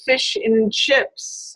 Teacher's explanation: we just say n instead of the whole an